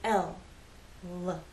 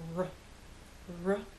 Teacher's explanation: with L the tongue makes contact with the hard bump behind your upper front teeth with r there is no contact with the tip of your tongue in any part of the roof of your mouth the sides